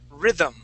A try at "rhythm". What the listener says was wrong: there you go nice